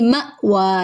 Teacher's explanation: یہ حمزہ ہے، الف نہیں ہے کیونکہ اس کے اوپر جزم آ گئی ہے تو اس کو جھٹکا دے کر پڑھیں گے۔ مأوا، واو کے اوپر کھڑا زبر ہے، ایک الف کے برابر لمبا کریں گے۔